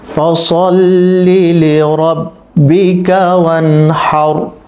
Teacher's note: এখানে রকে পোর করে পড়তে হবে, যেহেতু র সাকিন পূর্বে জবর এসেছে।